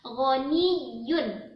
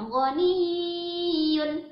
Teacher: Nah, yang sering keliru juga di bagian ya bertasydid. Jangan sampai didengung ya, cuman ditekan saja.